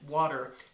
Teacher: the W sound as in water is a co-articulated consonant meaning that it's produced at two places of articulation it's a bilabial because it's produced with both lips W and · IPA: /w/